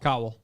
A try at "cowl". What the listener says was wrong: You said it cobble. You're saying cobble.